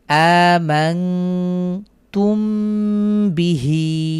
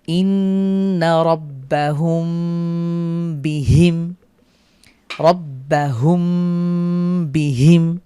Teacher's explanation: মিম সাকিনের পরে যদি বা আসে তাহলে আমরা গুন্না করে পড়বো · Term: ইখফার গুন্না